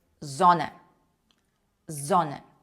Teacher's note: Літера с читається як український звук з.